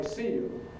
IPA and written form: ˈsiː ju (See you)